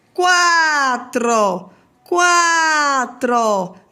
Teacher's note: começa primeiro com menos força e depois cresce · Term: ditongo crescente